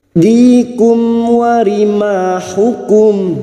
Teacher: Aidikum, di kasrah bertemu ya sukun 2 harokat. Dikum, mim sukun bertemu waw, idhar safawi, mim sukun dibaca jelas tanpa mendengung